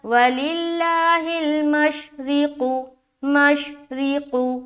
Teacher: قاف کو موٹا کرنا ہے کیونکہ یہ موٹے حروف میں سے ہے